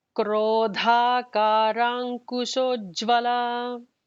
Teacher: Dha is the second Da, the Mahaprana.